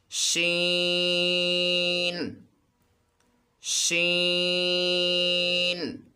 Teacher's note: شین کو پڑھتے وقت اس میں بھی سیٹی کی آواز آنی چاہیے اور اسے لمبا کر کے ادا کرنا ہے